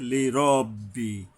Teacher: র হইল ইস্তিওয়ালার অক্ষর, মানে মোটা করে পড়তে হয়, আকার উচ্চারিত হবে না।